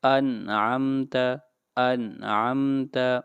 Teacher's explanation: انعمت، انعمت یہ مثال ہے نون کی۔ یہاں پر نون ساکن کے بعد عین آ رہا ہے، اس لیے یہاں پر نون کو ظاہر کر کے پڑھیں گے۔ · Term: اظہار